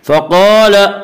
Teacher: फ़क़ाल क़ाफ को पुर पढ़ेंगे। क़ाफ हुरूफ़ मुस्तालिया में से हुरूफ़ मुस्तालिया 7 हैं जिनका मजमुआ खुस्सा ज़ग़्तिन क़िज़ है जो हमेशा हर हाल में पुर पढ़े जाते हैं।